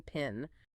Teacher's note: Think of the difference in English between the P in spin and the P in pin. The P in pin has a burst of air. It is aspirated.